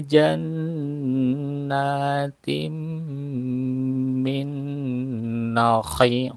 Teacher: Nah, di sini ada tanwin bertemu mim ya. Tanwin bertemu mim idgham biguna, langsung masuk ke dalam huruf mim